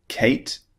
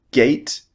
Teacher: C as in Kate is unvoiced. G as in gate is voiced.